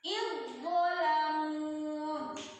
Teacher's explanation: In langsung monyong ya, karena do-nya monyong.